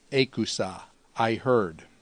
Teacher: the epsilon augment on the front causes the alpha to go long to an eta, the sa on the ending, as we'd expect.